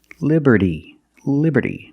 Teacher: T in liberty is between vowels, so it's pronounced like a fast D